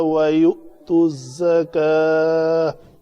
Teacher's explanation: یہاں پہ میری سانس ختم ہوئی، میں نے رکنا چاہا تو تا مربوطہ کو ہائے ساکنہ بنا کر میں یہاں پہ وقف کیا